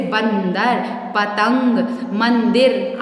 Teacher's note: वर्णों का उच्चारण करने में अधिक जोर लगाना पड़ता है तथा वायु नाक से बाहर निकलती है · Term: अनुस्वार